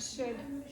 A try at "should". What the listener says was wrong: Otherwise it comes out should. Almost more like you're saying CH as opposed to SH.